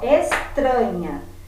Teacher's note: Então, tran é a sílaba mais forte na hora que eu falo.